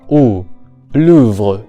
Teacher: And finally, in the word Louvre, we have the vowel OU, similar to the English U, but pronounced with the tongue moved backwards